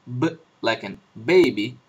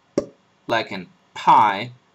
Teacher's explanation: your lips are doing the same thing but in one case your vocal cords are vibrating B and in the other they are not